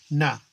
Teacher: We're holding our tongue to the alveolar, forcing the air through the nose, nasal, more formally the nasal stop.